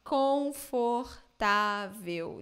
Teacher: In European Portuguese, you have the vowels there, but they just skip them. They say confortável, confortável, something like that, I guess.